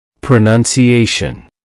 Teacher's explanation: That's 5 syllables. The main stress is on A.